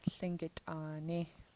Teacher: there's a pinched T in the middle, so this T will sound nice and sharp